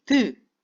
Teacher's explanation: 혓바닥 끝이 입천장의 이빨 바로 뒤쪽 부분에 붙었다 떨어지죠. 방해를 받는 거겠죠.